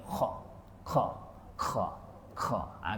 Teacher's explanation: Orang Kedah dia akan senang pergi turun sikit ke bawah dia akan bunyi kha